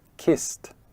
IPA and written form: kist (kiss)